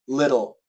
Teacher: It's basically a D. It's a flap T, but it's very similar to a D.